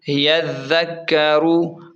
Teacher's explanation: را کو موٹا پڑھیں گے کیونکہ را کے اوپر پیش ہے